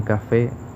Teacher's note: cuya intensidad o fuerza recae en la sílaba fe